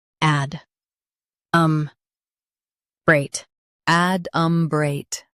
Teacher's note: Emphasize add and keep umbreate smooth.